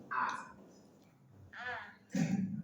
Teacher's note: Ada huruf Hamzah dari pangkal tenggorokan.